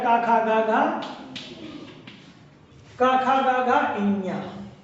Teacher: इसका मतलब कंठ जो है तो कंठ से गले से का वर्ग आ जाएगा